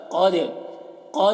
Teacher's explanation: دال میں قلقلہ قد دیکھیے آواز ٹکرا رہی ہے